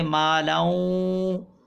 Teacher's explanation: یہاں پر ادغام ہوگا مع الغنہ